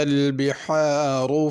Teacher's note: بحار میں بڑی ہا ہے، اس کو بہار چھوٹی ہا کر کے نہیں پڑھنا